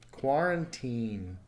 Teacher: the end sound is the last vert or last sound so does the end vibrate in your throat mmm yes it does so that means it takes a D sound